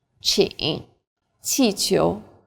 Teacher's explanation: Qi is like the CH in cheap, but again with a flatter tongue and a stronger puff of breath.